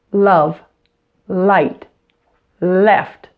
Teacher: I use the front of my tongue for the clear or light L